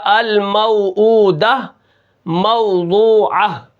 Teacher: اب یہاں پر دیکھیں الموعودۃ کو موضوعۃ کی جو ہا ہے، جو تا مدورہ ہے، اس کو میں وقف کے اندر ہا کے ساتھ بدل رہا ہوں. یہاں پر میں نے وقف کیا الموعودہ موضوعہ، آخری میں تا کو ہا کے ساتھ بدل رہا ہوں. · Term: وقف بالابدال